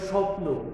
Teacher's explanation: শব্দের শুরুতে যদিও ব ফলা অনুচ্চারিত থাকে কিন্তু এখানে সামান্য ঝোঁক একটা শ্বাসাঘাত করে